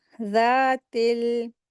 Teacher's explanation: ज़ाल को अलिफ मद्दा के साथ पढ़ेंगे, अप्लाई करेंगे, 2 हरकत खींच के पढ़ेंगे।